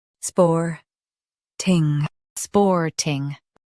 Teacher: Emphasize spor and keep ting light.